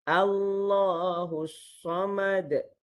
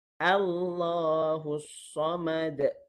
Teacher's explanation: boleh pada hamzah yang baris atas itu hamzah wasal yang baris atas itu dibaca fathah istifal, bukannya isti'la ataupun itbaq. Bukannya tebal, bukannya langit meninggi ke atas, bukannya pangkal lidah meninggi ke atas.